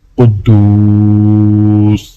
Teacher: دال کو واو کے ساتھ ملاتے ہوئے ایک الف کے برابر کھینچیں گے